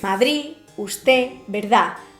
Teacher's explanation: en la pronunciación normal se articula una D final muy relajada, apenas perceptible